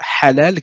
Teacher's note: On a le H, par exemple, de halal, qui est un H expiré.